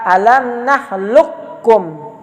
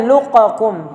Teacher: tetap ya huruf kaf dimasukkan kepada kaf